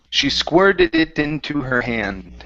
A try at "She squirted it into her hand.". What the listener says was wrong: Okay, so instead of squeer, squir.